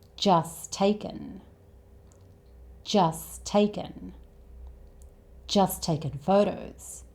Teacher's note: when there are 2 t sounds like this next to each other, the first t tends to be dropped. So instead of just taking, this becomes just taken. · Now, 'just' ends with the 't' sound, and 'takin'' starts with the same sound, 't'. And when there are two T sounds like this next to each other, the first 't' tends to be dropped.